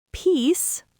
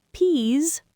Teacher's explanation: Peace, unvoiced s, short vowel. Peas, voiced z, long vowel.